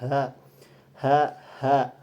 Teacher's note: dia termasuk dengan ihtiaki. Yaitu adanya gesekan ketika diucapkan. Kemudian dalam wadul autar dalam segi pengucapan pita suaranya itu mengalami ee getaran atau disebut dengan mahmus. · Kemudian dalam wadul autar dalam segi pengucapan pita suaranya itu mengalami ee getaran atau disebut dengan mahmus. Kemudian dia termasuk huruf yang muraqik, tipis. Maka cara pelafalnya itu ha ha ha.